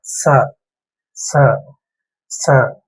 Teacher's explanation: நாக்கோட நுனி பகுதி அந்த மேல் பல்வரிசையோட அடிப்பகுதியில டச் ஆகணும். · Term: தந்த்